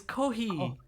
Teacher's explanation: They go H. Their lips never come to their teeth. It's almost like an H sound. It's like halfway between an F and an H.